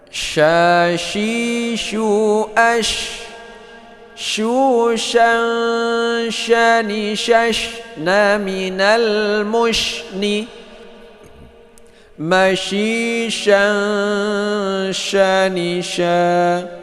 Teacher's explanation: Shin itu hamas, yaitu dia itu keluar angin saat kita baca